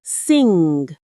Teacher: Feel how the back of your tongue goes up. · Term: ng sound